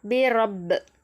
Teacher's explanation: ரா ஜபர் பெற்றிருக்கிறதுனால இதை நம்ம வல்லினமாக ஓதணும்